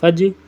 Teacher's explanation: جیم کے اوپر سکون ہے. ٹھیک ہے، تو اس کو کلکلا کریں گے